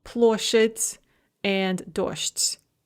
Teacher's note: Both of those are soft des that devoice into soft tes.